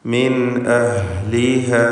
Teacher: മിൻ എന്നതിൽ സാക്കിനത്തായ നൂൻ ശേഷം ഹംസ ഇൽഹാർ ഹൽഖി നൽകി മണിക്കാതെ വെളിവാക്കണം.